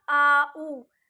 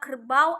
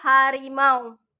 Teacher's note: kondisi lidah ketika memproduksi bunyi pada bagian awal dan bagian akhir tidak sama